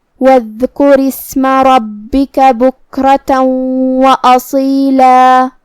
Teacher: حرف الصاد کو ہم تفخیم سے مطلب بھاری آواز میں پڑھیں گے